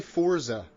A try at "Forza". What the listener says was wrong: There's no T in there. There's absolutely never been a T in there.